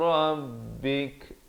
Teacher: bila waqaf, kaf itu diberikan tanda mati mendatang dan ada bunyi hamas, itu bunyi angin